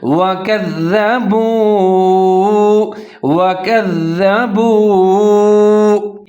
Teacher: آگے با کے اوپر پیش اور واو ساکن ہے، تو با پیش وا بو ملا کے پڑھیں گے اور ہونٹ گول کریں گے، لمبا کر کے پڑھیں گے